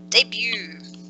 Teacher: you can see that we don't pronounce the T in it